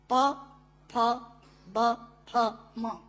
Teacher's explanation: दोनों होंठ मिलाकर बोले जा सकते हैं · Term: ओष्ठांग